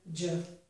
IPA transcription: dʒ